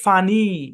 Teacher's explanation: একটু টান হবে, মানে লং ইয়ের সাউন্ড হবে ফানি অরিজিনালি।